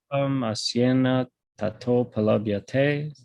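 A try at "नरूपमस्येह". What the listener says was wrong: Yeah, it's, you be careful with your narupam. It's asyeha, not asyena. Asyeha. Narupam asyeha.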